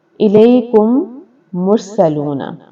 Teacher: میم ساکن کے بعد میم آئے تو دونوں کو ملا کر غنے کے ساتھ مشدد ادا کریں گے۔ مثلا الیکم مرسلون، اب میم ساکن ہے الیکم، آگے ہے پھر میم آیا الیکم مرسلون، اس کو ادغام شفوی کہتے ہیں۔